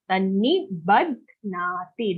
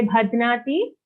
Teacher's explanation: Okay, it's not Bhadnati, it's Badhnati. Ba first and then dha, half dha, and then the dha is joined to a na sound.